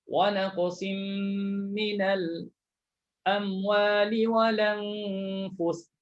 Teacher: Bila dah pindah baris, maka Hamzah tu tuan-tuan gugurkan. Gugurkan Hamzah tu. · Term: naqal